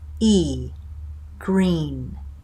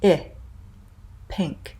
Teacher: So let's contrast the two high front vowels. So high front and tense, E, green. High front and lax, I, pink.